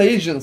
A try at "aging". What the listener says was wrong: You know, the way you pronounce it was bad. Because it almost sounded like you said Asians.